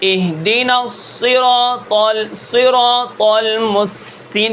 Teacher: صفیر کا معنی سیٹی کے ہوتا ہے. جب ہم صاد کو ادا کرتے ہیں تو سیٹی نکلتی ہے. اہدنا الصراط المستقیم کے اندر بھی ہے اہدنا، لیکن صاد کے اندر سب سے زیادہ کم سیٹی ہوتی ہے.